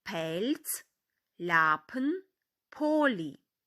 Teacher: літеру L вимовляємо м'яко як звук ль